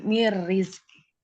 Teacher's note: Nun sukun bertemu dengan huruf ro. Dilebur ke huruf ro tanpa dengung.